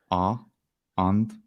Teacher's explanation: So the a is back unrounded.